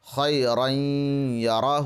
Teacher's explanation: اس بات کا خیال رکھیں کہ ادغام کرتے ہوئے ناک میں آواز ضرور لے جائیں گے